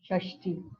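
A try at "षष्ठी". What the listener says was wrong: This not shashti. This is shakara is in shankara. That is cerebral. The lip is tongue has to be folded and touch the roof of the mouth. Murdanya shakara.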